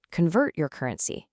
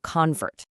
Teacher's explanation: When we use the word as a verb, we stress the second syllable.